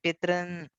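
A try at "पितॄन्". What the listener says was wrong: And the double sound is coming in the r, not in the in. So it's pitra, r, right? And it is double r. So that's why it's not pitran. It's pitran. It's a long r. Think of it that way.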